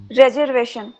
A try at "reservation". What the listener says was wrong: Very good.